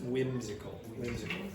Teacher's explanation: But most dialects, I would say, don't pronounce the H at all. It's just whimsical.